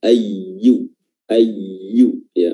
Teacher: pertengahan lidah yang diangkat hingga hampir menyentuh langit-langit bagian atas